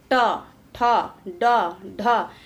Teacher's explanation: ट ठ ड ढ इसका उच्चारण स्थान मुर्धा माना जाता है